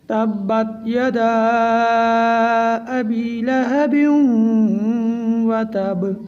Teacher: جب ہم آخر میں با کو ساکن کریں گے تو یہاں پر با میں قلقلہ ہوگا